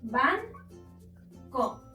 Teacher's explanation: Tiene su sílaba tónica en ban, es decir, en la penúltima sílaba, pero como también termina en una vocal, no la podemos acentuar.